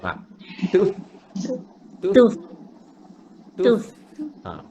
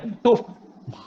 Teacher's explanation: Jangan rapat bibir. Dia huruf fa ni bibir bawah sahaja. Bibir atas tak ada. Bibir bawah kena kepala gigi ni.